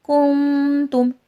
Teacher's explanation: نون ساکن میں اخفا ہوگا